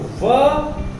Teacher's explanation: ये दांत और ओठों से मिल करके बोला जाता है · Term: दंतोष्ठ